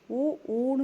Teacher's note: உ ஊன்னு சொல்லும்போதுதான் இந்த உதடு பாத்தீங்கன்னா குவியுது பாருங்க